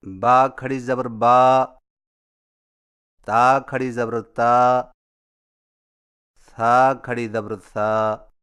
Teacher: کھڑا زبر کی ادائیگی، کھڑا زبر حرف کے اوپر کھڑی لکیر کو کھڑا زبر کہتے ہیں، اور کھڑا زبر ہونٹوں کو اوپر کی طرف کھول کر تھوڑا سا کھینچ کر پڑھا جاتا ہے، اور اس کی آواز کا رخ اوپر کی طرف ہوتا ہے